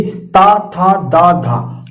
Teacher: आपकी जीभ आपके दांत से टकरा रही है तो ता वर्ग जो है वो दंत होता है, यानी कि दांत की मदद से बोला जाता है।